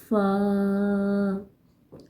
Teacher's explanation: سامنے والے اوپر کے 2 دانتوں اور نچلے ہونٹوں کے اندرونی حصے کے ملنے سے فا ادا ہوتا ہے۔